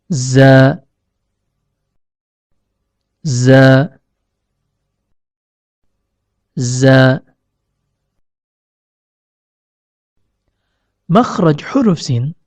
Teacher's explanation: huruf Zai keluar dari ujung lidah yang bertemu dengan bagian dalam gigi seri bawah · huruf shod keluar dari pertemuan antara ujung lidah dengan bagian dalam gigi seri bawah